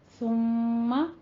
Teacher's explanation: ثم میم مشدد ہے، غنہ واجبہ، یعنی دو حرکتوں برابر اس کو لمبا کر کے پڑھنا ہے